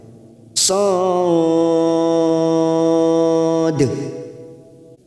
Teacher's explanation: ujungnya kita pantulkan seolah-olah bertemu dengan huruf dal sukun, ada sifat kol-kolanya yang memantul